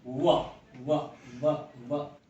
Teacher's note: Va sound is dantostho. Danta is dental, osta is lips. So labiodental. Va. So you have lip and teeth.